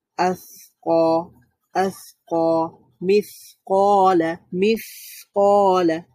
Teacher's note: আমি যখন মিস বলছি আওয়াজটা বন্ধ হয়ে যাচ্ছে না, চালুই থাকছে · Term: রাখাওয়া